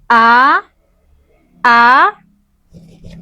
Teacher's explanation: Baik, yang pertama adalah makhrajnya atau tempat keluar dari huruf hamzah. Ee tempat keluar dari huruf hamzah ini atau makhrajnya itu terdapat pada pangkal tenggorokan. Kita bisa rasakan ketika kita mengucapkan huruf A, A a itu terasa bergetar di pangkal tenggorokan kita ya.